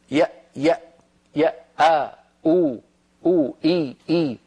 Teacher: فكتبوا الهمزة من أقصى الحلق